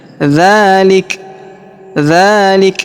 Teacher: Karena kita berhenti di sini maka huruf K di ujung kita berikan hembusan ya